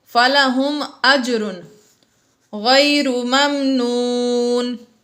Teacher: اجر میں جیم ساکن ہے حروف قلقلہ میں سے، اس لیے یہاں پر ہم نے قلقلہ کو ظاہر کیا